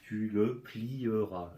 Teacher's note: Mais on ne prononce pas le E.